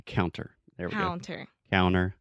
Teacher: a lot of times I don't articulate that t